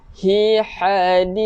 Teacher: Hujung lidah keluarkan sikit untuk tha.